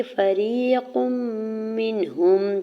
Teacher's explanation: فریق منہم، فا کے زبر کو جلدی سے ادا کرنا ہے۔ یا ساکن سے پہلے را کے نیچے زیر ہے یا مدہ اور دو حرکت کھینچ کے ادا کریں گے